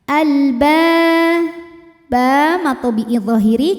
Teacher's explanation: karena ada Alif didahului fathah maka ba panjang dua harakat